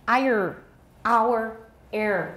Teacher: who pronounce are at the ends of words may also have retroflex sounds with the tip of the tongue raised